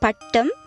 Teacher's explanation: Here the curled back tip of the tongue is the active articulator and the edge of the teeth ridge or the hard palate is the passive articulator. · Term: retroflex